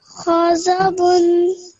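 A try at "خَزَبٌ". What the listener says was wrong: So bun narration or nasal sound bit longer. Bun, ghadabun.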